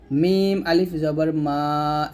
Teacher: মিমটা এখানে দুই ঠোঁটের শুকনো অংশে মিল করে উচ্চারণ করব